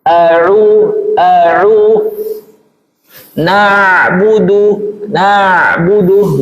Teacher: Tidak ada aliran suara suara di Khaisyum. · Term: ain